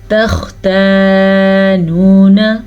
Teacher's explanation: خا کو پر پڑھیں اور خا کے مخرج کو گلے سے نکالتے ہیں اور گلے کے پہلے حصے سے نکالتے ہیں